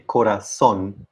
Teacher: a word that ends in n and i would say corazon so the last syllable is stressed